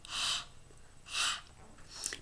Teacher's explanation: we have the glottal fricative, which is voiceless, and it is h